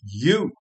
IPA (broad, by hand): juː